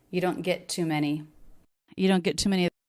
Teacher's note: The word to, even though it's a content word, it's said pretty quickly. The U vowel is pretty fast before a little bit of stress on many.